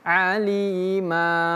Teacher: azaban alima, ma-nya panjang 2 harokat. Jadi bukan aliman tapi alima. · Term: mad iwad